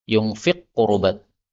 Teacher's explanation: Di sini ada yunfiqu qurubat, ya, qaf ketemu qaf, ini bisa idgham, yunfiq qurubat.